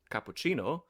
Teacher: it's not a s, but a ch, that's a soft C